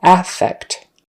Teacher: the noun is with the stress on the first syllable